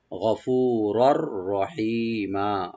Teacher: আর রার উপর যে তানবিন আছে, তানবিন পরে যে রা আসছে এখানে আমরা এদগাম করব, কিন্তু গুন্না ছাড়া, উইদাউট গুন্না এখানে এদগাম হবে, রার সাথে রা মিলে যাবে। গফুরর রহিমা, রটাকে ওপেন ডিপ করব, সেই একালে টানবেন।